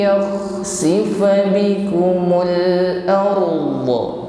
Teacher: Huruf kha ngorok halus, dan suara ngoroknya ini tidak terlalu cepat.